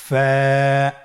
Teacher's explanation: ফা হরফটি উচ্চারণের ক্ষেত্রে বারিক হবে এবং এক আলিফ টেনে পড়তে হবে